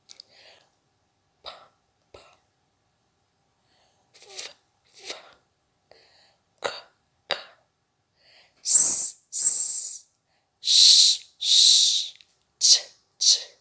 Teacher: A voiceless sound is like a whisper, a whisper. There's no vibration in your vocal cords. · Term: voiceless consonant sounds